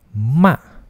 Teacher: nada yang keempat ialah nada dari atas turun ke bawah